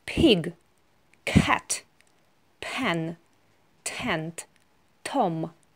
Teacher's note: Звуки П, Т, К сопровождаются придыханием. Мы добавляем к этим звукам небольшой выдох.